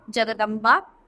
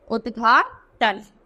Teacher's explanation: है तो अघोष व्यंजन सघोष व्यंजन में बदल जाता है